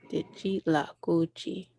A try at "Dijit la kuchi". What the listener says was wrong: Yeah, you got it.